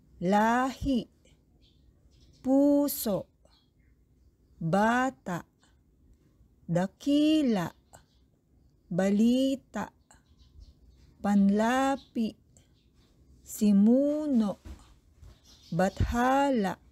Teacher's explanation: Binibigkas ito ng dahan-dahan katulad ng malumay. May diin sa ikalawang pantig mula sa huli. May impit na tunog sa huling pantig. Ito ay ginagamitan ng tuldik na paiwa. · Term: Malumi